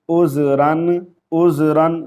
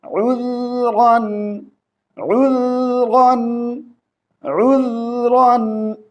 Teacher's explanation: عین کو حمزہ نہیں پڑھیں گے، ذال کو زا نہیں پڑھیں گے